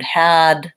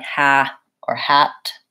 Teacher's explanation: the D sound might sound like a T or be left off entirely